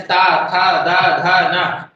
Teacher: जीभ जाकर के हमारी दांतों में क्या हो रही है, टच हो रही है। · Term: दंत्य वर्ण